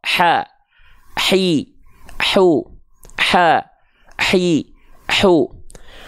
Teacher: Ini tempat keluarnya dari hak kecil. Ya, hak kecil juga punya sifat nafas, mengalir nafas. Tapi nama sifatnya hams, karakternya berbisik.